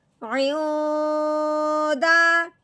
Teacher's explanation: لیکن یہاں جب ہم نے دیکھا ہے آگے دال ہے، دال حروف ہلکی میں سے نہیں ہے، اس لیے ہم نے نون ساکن میں غنہ کرنا ہے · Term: اخفا